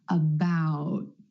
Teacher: Instead of that true T at the end, most Americans are going to hold that T, about. My tongue tip goes to the ridge behind my teeth and just stays there. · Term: held T